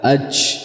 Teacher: ketika kita tidak merapatkannya atau kita memberikan celah maka akan keluar huruf Jim yang salah huruf Jim yang mahmus yang disertai dengan udara dengan e keluarnya banyak dari udara AJ dan ini adalah kesalahan